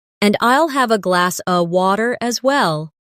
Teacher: In connected speech, glass of sounds like glass-a.